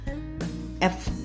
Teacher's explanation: 앞니가요. 여기 아래를 지긋이 닿으면서 바람 세는 소리예요. 소리가 나지 않아요. 이거는요. 목이 떨리지 않아요. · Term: 무성음